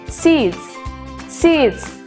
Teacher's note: Yang D termasuk ke dalam voice sound. Maka S-nya harus dibaca Z.